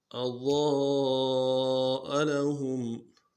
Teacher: میں دیکھیں لفظ ضاد کو حمزہ کو نرمی سے پڑھیں گے، ضاد کو موٹا کریں گے، اور ضاد کے بعد کیا ہے، الف مدہ ہے ، الف مدہ کے اوپر مد اصلی ہے، مد اصلی کہتے